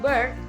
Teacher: bird is bilabial voice stop consonant